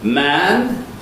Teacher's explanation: So if I say a word like man, my vocal folds are buzzing all the way through, fully voiced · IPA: [mæn]